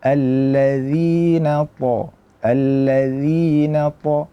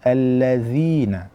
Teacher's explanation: Pada kata alladzina taghaw fil bilad, pada kata alladzi kita perlu perhatikan jangan sampai mengeluarkan hamas ataupun angin, karena zal merupakan huruf yang bersifat al-jahru, yaitu tertahannya nafas